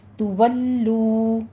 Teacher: کر ضمہ کی آواز کو آگے واو مدہ بنائیں گے، تولو، دونوں ہونٹوں کو گول کیجئے اور 2 کاؤنٹ کرنا ہے · تو سختی کر کے تھوڑا سا رک کر ضمہ کی آواز کو آگے واو مدہ بنائیں گے ، تولو، دونوں ہونٹوں کو گول کیجئے اور 2 کاؤنٹ کرنا